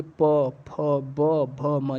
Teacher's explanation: देखिए आपके ओठ से ओठ सट रहे हैं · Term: ओष्ठ